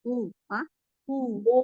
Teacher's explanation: hunya itu ada silah kubra empat atau lima ketukan hu hu dipanjangin Ya.